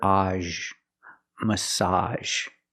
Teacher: Example, she's getting a massage. Make the open ah sound like hot and stop, plus the zh sound.